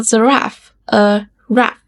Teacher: little kids often call giraffe a raff because they leave off the unstressed syllable